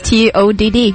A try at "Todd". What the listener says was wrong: Well, you're saying it like King Tut.